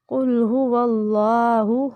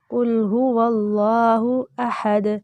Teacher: कुल हुवल्लाहु हु को लंबा नहीं करेंगे